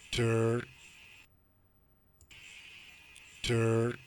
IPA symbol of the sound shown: ɚ